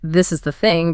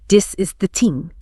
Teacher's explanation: For the voice TH, like in the words this or that or the, German speakers will substitute a D or a T. So a phrase like this is the thing becomes dis is the ting.